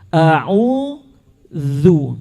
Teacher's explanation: syarat mutlak benarnya keluar huruf zal dari lisan kita, harus terlihat ujung lidah. Harus terlihat ujung lidah.